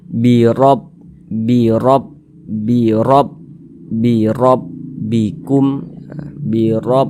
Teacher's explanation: huruf rnya itu dibaca Dibaca tkhim dibaca tebal maka ketika Kita mengucapkannya pangkalisan kita naik terangkat ke atas ketika